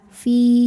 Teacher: Jika kita berhenti di fi, ini hukumnya matobi'i, karena huruf ini adalah huruf mad, huruf ya sukun ya. Ya sukun yang didahului harokat kasrah, maka panjang 2 harokat. Fi. Namun dibaca panjangnya hanya saat berhenti saja.